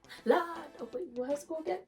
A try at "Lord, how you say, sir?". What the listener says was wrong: Lord, how you say, sir? but you say twanging still. You have to say it in a patois way. Lord, how you say, sir?